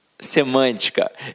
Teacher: Todos esses exemplos são proparoxítonas, porque a sílaba tônica está na antepenúltima sílaba